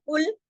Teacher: फिर देखिए कुल, मोटा पढ़ा जाएगा, कुल, कॉफ मोटा, लाम बारीक